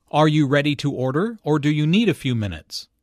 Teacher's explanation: notice the rising intonation on order and the falling intonation on minutes